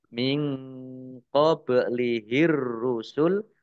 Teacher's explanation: nun sukun bertemu dengan huruf q bacaan Ikhfa dibaca samar-samar